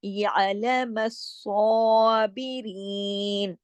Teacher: یا مدہ ہے اس لیے یا کو بھی کھینچ کے پورا صابرین